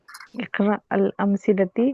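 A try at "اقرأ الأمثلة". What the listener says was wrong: ती नहीं होगा ना, एक मिनट, टी नहीं हो सकता सिस्टर, ती नहीं हो सकता, यहाँ पे गलती है।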